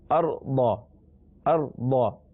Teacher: ارض کا معنی زمین، اور یہ قرآن پاک میں 459 ٹائمز آیا ہے، 459 مرتبہ یہ لفظ آیا ہے، اور اس میں جو را ہے اس سے پہلے زبر ہے، لہذا یہاں را کو پر پڑھیں گے، اور ضاد چونکہ حروف مستعلیہ میں سے ہے لہذا ہر جگہ اسے موٹا پڑھنا ہے